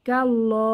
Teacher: লাম জবর কাল লাম খারা জবর ল কাল্লা এখানে আল্লাহর লাম আল্লাহর লামের আগের হরফ কাফে হচ্ছে জবর এসেছে তাই আল্লাহর লাম মোটা করে পড়তে হবে